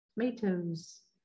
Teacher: And our plural sound doesn't sound like an S, it sounds like a Z.